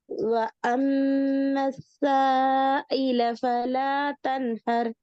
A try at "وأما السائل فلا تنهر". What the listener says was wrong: நீட்டுறது போதாது, 3 செகண்ட் நீட்டணும். وأما السائل فلا تنهر.